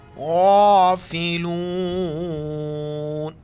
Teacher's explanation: गौइन मोटा करके पढ़ेंगे और मद है, 4 अलिफ, 1 अलिफ की मिकदार, कड़ा ज़बर है, 1 अलिफ की मिकदार खींचना है।